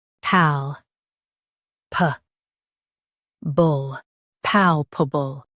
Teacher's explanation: Emphasize pal and keep pubble light.